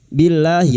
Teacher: lam jalalah yang didahului kasrah dibaca tarkik. Billahi lahnya kita panjangkan 2 harakat.